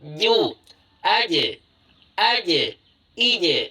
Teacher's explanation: Jim itu keluar dari tengah lidah kita. Ini bayangkan tengah lidah, ini ujung lidah, tengah lidah, pangkal lidah.